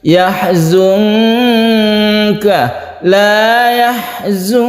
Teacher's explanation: Ini ada nun mati bertemu dengan kaf, kita sebut dengan ikhfa hakiki, kita baca samar, kita dengungkan